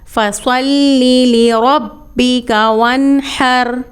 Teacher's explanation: اب یہاں پہ یاد رکھیے گا فصلی نہیں ہے، یعنی سین کی ادائیگی سے مکمل طور پہ بچنا ہے۔ فصلی، صاد مستعلیہ لیٹر ہے، اس کو پر اور موٹی آواز سے پڑھا جائے گا۔